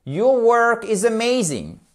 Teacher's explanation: Quand c'est une affirmation, ça descend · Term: intonation